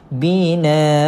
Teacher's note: kalau kata nak berhenti kita akan baca dua harkat juga walaupun tak ada Alif di belakang dia Sebab Dia adalah hukum mad ewat so kat sini jadi Mad